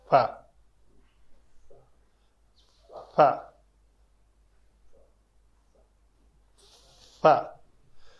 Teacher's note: تجوید کے اعتبار سے پہلے پڑھ لیتے ہیں۔ فا کا مخرج ہے، اوپر والے دانت نیچے والے ہونٹ کے اوپر لگتے ہیں